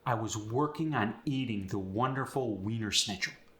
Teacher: the W becomes a v but it's kind of a lazy V the lips and the teeth Don't firmly go together like in standard American English